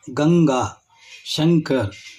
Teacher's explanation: ಮೂಗಿನ ಸಹಾಯದಿಂದ ಇವುಗಳನ್ನ ಹೇಳುತ್ತೇವೆ ಆದರೆ ಇಲ್ಲಿ ತುಟಿಗಳು ಒಂದಕ್ಕೊಂದು ಸೇರುವುದಿಲ್ಲ ಈ ಅಕ್ಷರಗಳ ಅಥವಾ ಈ ಪದಗಳನ್ನು ಹೇಳುವಾಗ ಅಥವಾ ಉಚ್ಚರಿಸುವಾಗ ಮ ಎಂಬ ಧ್ವನಿಯು